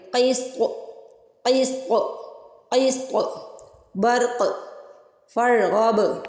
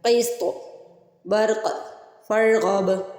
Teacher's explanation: طا قاف با یہ حروف قلقلہ میں سے ہے کہ ان کو ہلا کے ادا کرتے ہیں